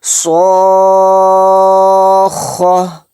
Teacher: حالت وقف میں یعنی سانس توڑنے کی حالت میں ہم اس تا کو ہائے ساکن میں بدل دیں گے۔